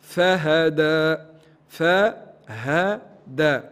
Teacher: رد بالنا من عدم تفخيم الفاء، لا نقول فهدى، الصواب فهدى، فهدى، كل الحروف مرققة.